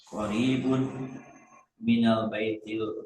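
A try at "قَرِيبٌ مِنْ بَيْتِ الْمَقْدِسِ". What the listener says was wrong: nggak ada alif lah. Min baitil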